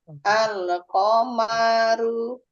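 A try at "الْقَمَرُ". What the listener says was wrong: Oke, dua bagian terakhirnya yang panjang, Ibu.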